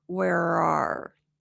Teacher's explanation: The tongue goes back. It activates that American R placement. So, instead of werar, rar, where are.